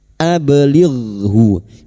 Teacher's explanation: Ab huruf ba sukun. Huruf ba yang mati asli di tengah kalimat qalqalah sugro. Jangan lupa dipantulkan